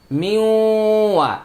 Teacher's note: নুন সাকিনের পরে ওয়াও আসছে এটা ইদগামে বাগুন না